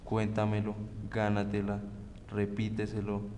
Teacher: Las palabras sobreesdrújulas lleva acento en la trasantepenúltima sílaba. Al igual que las palabras esdrújulas, siempre van tildadas.